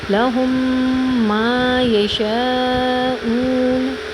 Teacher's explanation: بڑی مد ہے، تھوڑا کاؤنٹ کریں گے، اس کو 4 کاؤنٹ کریں گے